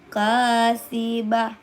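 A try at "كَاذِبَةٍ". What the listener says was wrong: Bukan sa. Za. Nasiyatin kazibah. Kazibah. Iya, itu lembut ini, halus.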